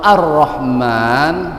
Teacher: lam syamsiah ya huruf lam nya tidak terdengar